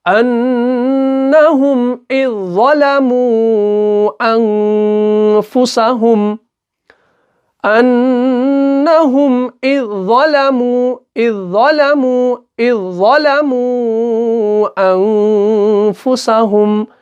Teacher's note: وہ ذال جو ہے وہ اس ظا کے اندر مل جاتا ہے، مدغم ہو جاتا ہے · ذال کو ہم نہیں پڑھ رہے ہیں، اس کو ہم سائلنٹ کر رہے ہیں